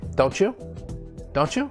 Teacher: two sounds blend together form a new sound often results in sounding like like a ch like a ch or a j like a j sound so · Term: ending sounds